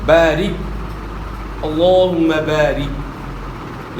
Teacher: خوب پورا ادا کرنا ہے، اور بارک، بارک نہیں پڑھنا ہے، زیر کو مجھول نہیں پڑھنا ہے، رے نہیں پڑھنا ہے، ری پڑھنا ہے ، بارک، اللہم بارک، یا الف مدہ ہے، را کے نیچے · را کے نیچے زیر، را کو اپنے باریک ادا کرنا ہے، موٹا نہیں ادا کرنا را کو،